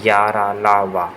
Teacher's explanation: इनका उच्चारण जीभ, तालु, दांत और ओठों के परस्पर सटाने से होता है, किंतु कहीं भी पूर्ण स्पर्श नहीं होता। · इन व्यंजनों का उच्चारण स्वर तथा व्यंजन के मध्य का सा होता है। उच्चारण के समय जिह्वा मुख के किसी भाग को स्पर्श नहीं करती। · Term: अंतस्थ व्यंजन